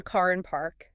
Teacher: that almost non-existent R in British English